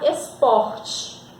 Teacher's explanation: a penúltima sílaba da palavra mais forte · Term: paroxítona